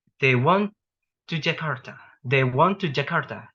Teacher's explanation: a falling pitch or intonation for a declarative statement to signify the conclusion of a grammatical unit, such as a phrase or sentence. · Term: Falling tone